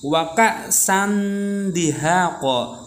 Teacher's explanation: Jadi tanwinnya masuk ke huruf dalnya.